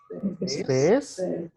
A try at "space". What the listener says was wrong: Second part के ऊपर ज्यादा स्ट्रेच करो. स्पेस. Not sh, sa. Space. Space.